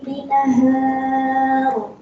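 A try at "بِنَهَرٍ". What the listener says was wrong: Ulang, hanya pendek. Binahar.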